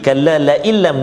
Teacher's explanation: nun mati bertemu dengan lam, iaitu idgham bila gunnah, tanpa dengung